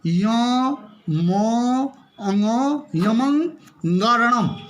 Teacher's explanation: यमंगरणम, यमंग, यो बोलना है इसको, यो नाक से, क्योंकि इसमें सब नासिक वर्ण ही है, सब इसमें पंचम वर्ण है, इसीलिए इसको हम नाक से ही उच्चारण करेंगे